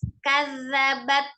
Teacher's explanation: Huruf zal ada di ujung lidah bertemu dengan ujung gigi seri bagian atas. Jadi kadzabat.